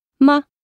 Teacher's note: This is very much a resigned tone. Medium pitched and laid back, it usually appears at the end of a phrase. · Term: neutral tone